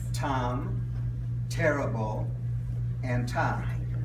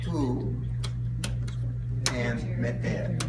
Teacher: T is less pronounced, less explosive than in English.